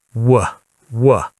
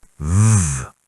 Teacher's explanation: W uses both lips and V uses lip and teeth.